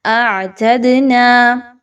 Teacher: دال حروف قلقلہ میں سے ہے، اس کو ہلاتے ہوئے پڑھیے